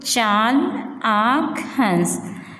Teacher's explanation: जिनका उच्चारण मुख और नाक दोनों से किया जाता है, उन्हें अनुनासिक कहते हैं।